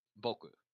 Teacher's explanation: your vocal chords resonate when you say them so they're called voice consonants have a trait called prenasalization where you pronounce like a sort of sound on the beginning